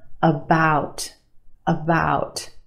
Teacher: The first syllable is your schwa